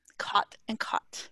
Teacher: and he does not see why i would say them differently to me they are the same vowel